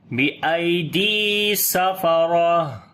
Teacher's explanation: دال کو لمبا کریں گے، یا مدہ ہے